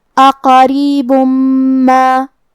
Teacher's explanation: میم حروف الادغام بغنہ میں سے ہے تو ہم یہ حکم کو غنہ اور تشدید کے ساتھ ادا کریں گے